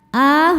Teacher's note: A hukumnya mad badal, sebab ada hamzah yang dipanjangkan.